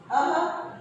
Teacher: अह, इसे विसर्ग कहते हैं और जब इसका उच्चारण करते हैं तो पीछे ह की ध्वनि निकलती है।